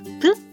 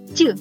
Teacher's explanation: при їх вимові повітря що виходить з ротика зустрі є перешкоду вони обидва глухі тому що голосок не працює